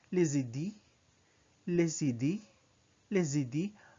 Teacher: Notice that the sound of the S is combined to the sound of the I. It's as if les idées is one word.